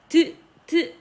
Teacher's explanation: 윗니, 대문니 뒤쪽이랑 혀 끝이 탁 붙죠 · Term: 치조음